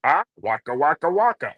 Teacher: there's a fuzzy bear sound, which is the back of the throat.